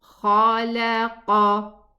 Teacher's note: It's kha from the nearest part of the throat, and then after it comes the qaf from the further most part of the tongue.